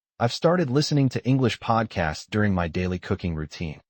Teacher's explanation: The function words like I've, to, during, and my are reduced.